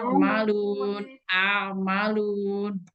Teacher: Dia tuh agak sedikit malu, bukan berarti terjepit. Malun, bukan terjepit dia, tapi malun. Ada suara alirannya dikit. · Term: tawasud